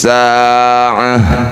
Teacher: Tak marbutoh dihentikan, bunyikan hak sukun.